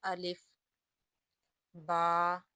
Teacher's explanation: سب سے پہلے الف، اس کا مخرج جوف دہن ہے، ہم اس کو اس طرح پڑھیں گے الف۔